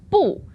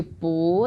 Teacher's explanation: We go from the 4th tone, that's 不, into 不, the 2nd tone.